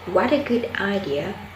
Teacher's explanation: The tone rises at the beginning and gradually falls at the end. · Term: Exclamation